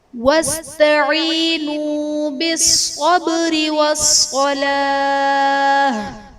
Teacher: با حرف قلقلہ ساکن ہے تو یہاں پر قلقلہ خوب ظاہر کریں گے